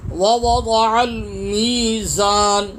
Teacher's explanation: میم یا زیر می 1 انگلی کی مقدار کھینچ کے پڑھیں گے